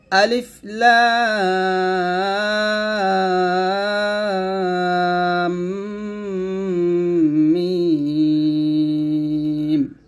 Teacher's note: হরফ উপর মোটা চিহ্ন থাকলে সেই হরফে 4 আলিফ টান দিতে হয় এবং মিমেও 4 আলিফ টান দিতে হবে। কিন্তু মিমের যেহেতু এখানে তাসদিদ আসছে, তার মানে আমরা এখানে গুণনা করে আবার মিমের 4 আলিফ টান দেব